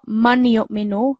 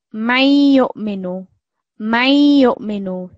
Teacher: it's not a complete noon sound that's coming through, it's just a hint of that nasal sound. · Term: ghunna